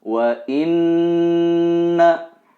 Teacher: ini adalah gunnah, harus ditahan 2 atau 3 harokat dan didengungkan.